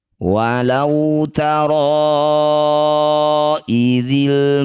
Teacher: Cara bacanya ro yang bertanda layar panjangkan 5 harokat. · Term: mad jaiz munfasil